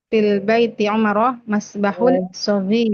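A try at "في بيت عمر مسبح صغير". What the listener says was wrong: Jangan bilang fil. nggak ada alif lam.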